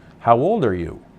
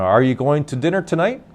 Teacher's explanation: there's the sound of the voice going up making the sound of a question